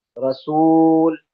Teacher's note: जब वाव को खींचेंगे तो मुंह के अंदर खाली जगह से वाव मद्दा की आवाज आएगी।